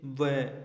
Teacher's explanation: इसका सही उत्तर है दंतोष्ठे क्योंकि वै का उच्चारण करते समय दंत तथा ओष्ठ का एक साथ प्रयोग किया जाता है। आप बोलकर देखिए, वै, इसमें दंत तथा एक ओष्ठ का एक साथ प्रयोग हो रहा है, इसलिए इसे दंतोष्ठ्य वर्ण कहा जाता है।